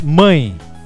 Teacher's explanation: nós falamos mãe praticamente nós terminamos a a palavra com um I mesmo Portanto o e é representado como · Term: semivogal, I semivogal